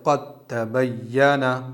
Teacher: دال کو نہیں پڑھیں گے، بس تا پر ہی تشدید لگا دیں گے، جیسے قَدْ تَبَيَّنَ۔ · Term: ادغام متجانسین